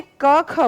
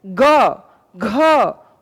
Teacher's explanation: यह कंपन कम हुआ लेकिन जैसे ही हम जी ग मैं बोल रही हूं आप वाइब्रेशन महसूस कर सकते हो